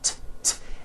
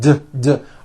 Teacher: TTT it's unvoiced your vocal cords are not vibrating TT now don't change a thing with your mouth just take the same sound and add voicing what does that t sound become t t d d d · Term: paired consonants